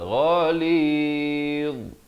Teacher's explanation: dia macam huruf zal juga di hujung lidah itu, tapi bunyinya tebal. Ghalidh, gitu ya. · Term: huruf dha